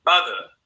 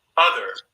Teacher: So you're adding rhoticity to this schwa sound, so it becomes more like as in other, Now, in some accents, when this R-ness gets dropped, other, that becomes a non-rhotic accent. When the R is on there, as in my own speech, that's called a rhotic accent.